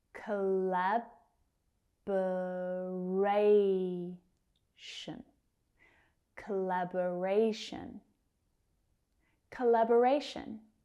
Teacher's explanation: We've got a primary and a secondary stress in here. Ray is our primary stress and lab is our secondary stress.